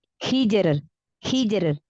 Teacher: Ro sukun karena wakaf, sebelumnya sukun, sebelumnya berharokat kasroh. Beda kan? Kalau yang lain sebelumnya fathah, ini kasroh. Maka tipis.